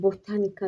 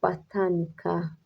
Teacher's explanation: Burada botanika yox, botanika şəklində tələffüz olunacaq. Vurğu ikinci hecanın üzərində düşəcək.